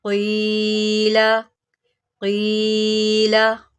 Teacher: قاف کو موٹا کریں اور یہاں پر یا مدہ ہے تو ہم اس کو ایک الف کے برابر لمبا کریں گے